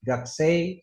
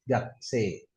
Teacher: Jangan dibaca gaksei, ada i-nya juga salah tapi dibacanya e panjang. Gak se lidahnya itu jangan sampai naik.